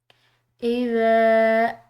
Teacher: ذال بالکل نرم حروف میں سے ہے، اس کو ادا کرتے ہوئے سیٹی کی آواز نہ ہو، کسی قسم کی سختی نہ ہو۔